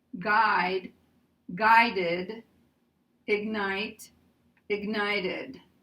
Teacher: because we have a [ d ] and we have a [ t ], we're going to add [ əd ]